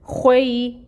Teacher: خو جو ہے وہ حروف مستعلیہ ہے، اور جس کو ہمیشہ پر پڑھا جاتا ہے، پر پڑھیں گے۔ · یا ساکن اور اس سے پہلے فتحہ کی حرکت، تو لین کا قاعدہ ہو رہا ہے، اور لین ہو تو نرمی سے ادائیگی ہوتی ہے۔ خوئی اور خو جو ہے یہ پر ہوگا۔